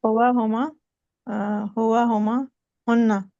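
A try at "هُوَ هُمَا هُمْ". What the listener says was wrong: हुआ हुमा हुन्ना तो नहीं आता है, हुआ हुमा हुम आता है, फिर आता है हिया हुमा हुन्ना।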